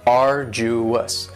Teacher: arduous has 3 syllables, and the stress is on the first syllable.